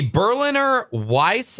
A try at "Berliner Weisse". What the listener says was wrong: It's called Berliner Weisse. the W in the W is pronounced with a V. Weisse.